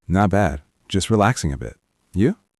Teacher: notice the intonation on you. It goes up. It is an invitation.